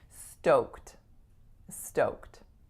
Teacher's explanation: goes right from AK to it sound the other thing is the vowel on the letter O is of course oh oh so again we're rounding